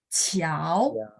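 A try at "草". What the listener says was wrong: Jangan ayun Pak. Nada 2 itu naik smooth ke atas.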